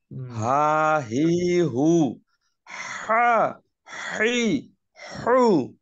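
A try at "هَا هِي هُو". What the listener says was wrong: হ্যাঁ, মাশাল্লাহ।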